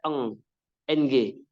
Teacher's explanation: itu lidah bagian belakang nempel langit-langit atas yang lunak